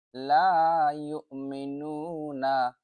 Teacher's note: এখানে নু এক আলিফ টান হবে। যদি এখানে থামি নুনকে সাকিন পড়ি তাহলে ৩ আলিফ টান হবে।